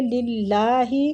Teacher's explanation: اللہ کی لام کو ادھر ہم باریک پڑھیں گے